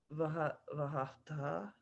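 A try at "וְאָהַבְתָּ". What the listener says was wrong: Havta, a couple extra ahs.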